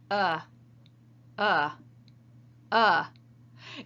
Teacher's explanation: all that's required is to engage the vocal cords no other articulators are needed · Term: the schwa